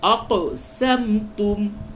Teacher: قاف میں قلقلہ ہوگا یعنی قاف کے مخرج میں ٹکراؤ پیدا ہوگا